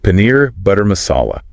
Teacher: The stress falls on the second syllable of paneer and the saw in masala.